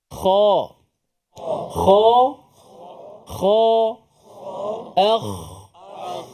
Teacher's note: selain daripada makhraj tempat dia di hujung halqum, sifatnya yang tebal. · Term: huruf kha